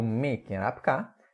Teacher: Temos a adição de M e a nasalização da vogal inicial.